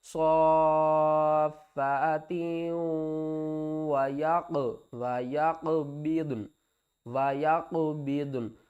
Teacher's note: ہے۔ اور قاف کے اوپر دیکھیں تو یہ جزم ہے تو قاف حروف قلقلہ میں سے ہے تو یہاں پر قلقلہ بھی کریں گے